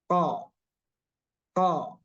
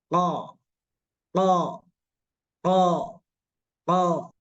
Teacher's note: dia di pangkal lidah sekali, menyentuh apa namanya, menyentuh langit-langit yang lunak. Nah, cara melafalkannya, jadi dibenturkan.